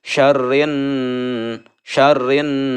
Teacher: cara membacanya adalah mendengung ditahan dengannya selama 2/3 harokat